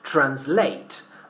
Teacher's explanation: The verb translate is pronounced with the stress in the last syllable in British English, translate.